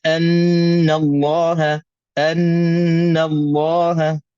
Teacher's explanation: wajib dengungnya dua harakat sabdu atas Nun